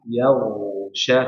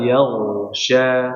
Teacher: yagsya pertama ditebalkan dulu baru dialirkan sempurna